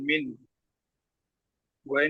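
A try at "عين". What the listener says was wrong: গইন না, এটা হলো আইন, আইন, আইন ইয়া যাবার। আপনি বানানটা তো কমপ্লিট করলেন না, এখানে আইন ইয়া যাবার আই, নুন নিন।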